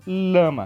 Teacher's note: o fonema de lama eu coloco a língua no palato duro ou seja no céu da boca